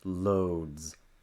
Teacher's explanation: The word load. The D is a voice sound, D. Load. Your throat will vibrate, so that means the S will vibrate.